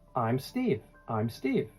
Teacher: The contraction I'm puts all the stress on your name, which is the most important word.